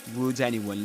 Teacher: linking the final sound in the word would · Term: catenation